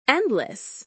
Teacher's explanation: You didn't say endless, you said >> endless. The d sound disappeared. This is a pronunciation feature called illision.